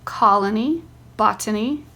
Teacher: in the words colony and botany the first syllable is accented